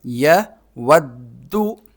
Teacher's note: سنہ، یا زبر یا، واو کو دال کے ساتھ ملائیں گے، دال کو جما کر پڑھیں گے، اس پر تشدید ہے